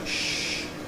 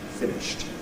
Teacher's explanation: ends in a voiceless sound [ ʃ ], so according to the rule, it’s [ ˈfɪnɪʃt ]